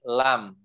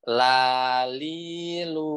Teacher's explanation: ujung lidahnya bertemu dengan langit-langit depan tuh ya dekat depan dekat gusi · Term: huruf lam